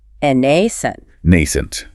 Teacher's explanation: Stress on the first syllable, long A sound. Second syllable is a schwa.